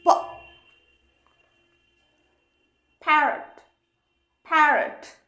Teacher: গ গ, ফ ফ, ফ নয় কিন্তু, অনেক সময় মনে হয় ফ কি, ফ নয়, আবার একেবারে পও নয়। যেহেতু আমি ঠোঁটটা চট করে খুলে দিচ্ছি, তো অনেক সময় মনে হচ্ছে ফ, কিন্তু ফ নয় কিন্তু।